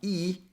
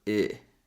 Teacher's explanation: Careful so you don't pronounce it as e. E is a tense sound and here we want a more relaxed sound. So the tongue is a little bit lower.